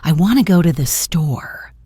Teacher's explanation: The main stress is on want and store. While the other little words become much softer and blend together.